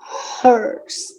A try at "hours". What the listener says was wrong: No H. Hours. 5 hours. The H is silent. 5 hours. Hours. 1 hour, 2 hours, 3 o'clock, 4 o'clock.